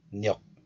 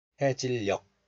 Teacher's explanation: due to syllable closure, G sound represents the K sound instead.